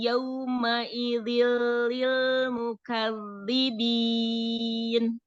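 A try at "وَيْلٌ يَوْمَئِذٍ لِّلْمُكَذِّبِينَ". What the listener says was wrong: Masya Allah, tapi jangan dinaber linnya ya. Lin itu arti secara bahasa artinya mudah. Secara istilah keluarnya huruf dari makhrajnya tanpa membebani lidah. Jadi jangan terbebani, jangan dinaber ya. Wailu yauma idzil lil mukadzibin. Yau monyongin sempurna seperti dhammah. Yau karena waw sukun.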